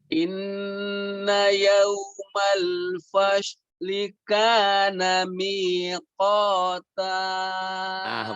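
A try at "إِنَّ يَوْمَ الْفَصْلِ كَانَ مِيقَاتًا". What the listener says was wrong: Bagus ya.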